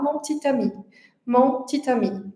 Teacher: esse e final, esse chuá, ele vai praticamente desaparecer na fala do dia a dia quando a gente tá falando numa velocidade normal · esse schwa entre duas consoantes, ele vai praticamente desaparecer e é quase como se a gente pronunciasse duas consoantes juntas